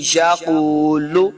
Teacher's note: میں یقول اس قاف کو بھی ہم نے موٹا پڑھنا ہے، حروف مستعلیہ سے ہے، قاف پیش واو واو مدہ ہو رہا ہے، یہاں پہ اس کو دو حرکات لمبا کر کے پڑھیں گے